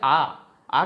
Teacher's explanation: विवृत में मुंह पूरा खुल जाता है, जैसे आ का उच्चारण कर रहे हैं, मुख पूरा खुल गया।